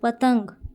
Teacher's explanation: इसमें नाक से साउंड आ रही है तो यहाँ अनुस्वार आएगा